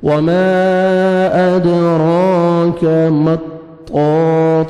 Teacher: طا کو موٹا کر کے پڑھیں گے، حروف مستعلیہ میں سے ہے، موٹا کرنے والے جو لیٹرز ہیں وہ ہیں، تو یہ طا انہی میں سے ہے، موٹا کر کے پڑھیں گے۔